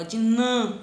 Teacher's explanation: eu tenho um acento circunflexo, olha o timbre fechado dele, ó, de nã, ele tem um som de an.